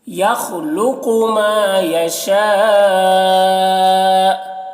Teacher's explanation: ما میں الف مدہ ایک الف کے برابر کھینچیں گے۔ یشا میں مد متصل سے 3-4 الف کے برابر کھینچیں گے